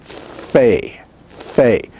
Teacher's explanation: labial dental that is your your lower lip goes against your teeth fae fei but in hebrew it is pronounced using both lips · The F in English is pronounced using what we call labial dental. That is, your lower lip goes against your teeth.